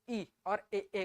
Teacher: जीभ का आगे वाला भाग फैल के ई और ए ए बोलने में मदद कर रहा है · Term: अग्र स्वर